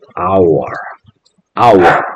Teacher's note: hour es una palabra que empieza con una H muda. Quiere decir que esta H no tiene ningún sonido.